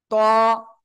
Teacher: জিহ্বার আগা সামনের উপরে 2 দাঁতের গোড়ায় লাগান, লাগিয়ে মোটা আওয়াজে উচ্চারণ করতে হবে।